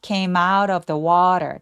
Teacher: came out of처럼 m도 마웃의 모음과 연결해 주세요.